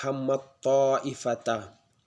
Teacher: Jika kita baca yaitu dengan idgham mutajannisan menjadi hammatto, ada tasdid setelahnya, digabungkan menjadi hammatto ifata.